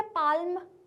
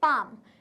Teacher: हम पाम को भी एल को प्रोनाउंस नहीं कर रहे हैं। क्या हम इसको ऐसे बोल रहे हैं क्या पाल्म, नहीं, हम इसको क्या बोल रहे हैं, पाम। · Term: एल वर्ड साइलेंट